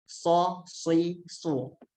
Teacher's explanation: kalau so itu tebal, so. Itu agak dimonyongkan ya, agak dimonyongkan bibirnya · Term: huruf so